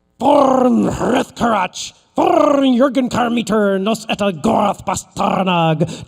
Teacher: in the dwarf language, you are supposed to roll your R's by wiggling your uvula. So, let the wiggling commence.